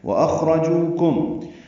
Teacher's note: خا ساکن ہے اس لیے پر ہے اور اس پہ ہمس بھی ہے، را پر ہے، جو واو مدہ ہے، کم میں میم ساکن کے بعد میم آنے کی وجہ سے ادغام ہوگا، یہ ادغام شفوی ہے، غنہ ہوگا۔